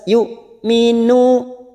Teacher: hamzah sukun siddah sifatnya dibaca tegas.